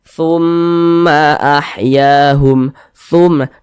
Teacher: Karena dia digunnahkan atau didengungkan, jadi suaranya itu kita tahan, kita panjangkan sejenak. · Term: gunnah musyaddadah